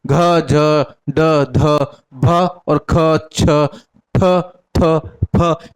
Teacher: महाप्राण व्यंजन में आ जाएंगे इनका उच्चारण अगर आप करोगे तो इनमें थोड़ा बोलने में उच्चारण करने में अधिक समय अधिक स्वास की खर्च होती है